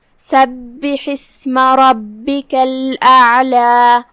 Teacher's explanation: کلمت سبح میں یہاں با پہ تشدید ہے. 2 حرف کے برابر ہم با کو ادا کریں گے کیونکہ تشدید کی اصلیت 2 حرف ہوتی ہے. جیسا کہ یہاں حرف البا ہے تو یہ 2 با ہے.